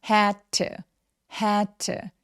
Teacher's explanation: had의 D와 to의 T가 혀의 위치가 같아요. 그래서 한 번만 발음하시면 됩니다. had to가 아니라 had to, had to 이렇게 소리 내주시면 돼요.